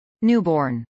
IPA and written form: ˈnuːbɔːrn (newborn)